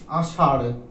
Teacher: তাড়িত ধ্বনি কারণ আমরা যখন এটা উচ্চারণ করবো তখন জিহ্বাকে যেন একটা তাড়া দেয়, আষাঢ় তাড়া দেয়, একবার বহুবার নয়, একবার মাত্র তাড়া দেয়